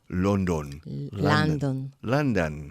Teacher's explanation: the first syllable and the second syllable are pronounced identically